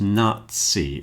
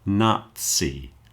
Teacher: So a word like Nazi as in the German socialist party is pronounced Nazi. It's pronounced more like a ts sound.